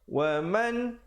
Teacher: Wa man, bunyi saja man, di situ hukum izhar halqi. Jangan panjang, jangan dengung, jangan apa. Sempurnakan saja bunyi nun matinya.